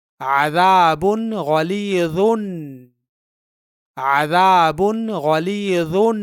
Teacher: یہاں اس با کی تنوین کا اظہار ہوگا کیونکہ اس کے بعد حرف غین ہے جو حروف حلقی میں سے ہے